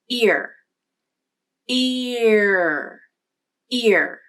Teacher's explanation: feel movement in your articulators as you say ear ear because the ear vowel is made up of two sounds the e vowel plus the r sound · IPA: ɪɹ, /ɪɹ/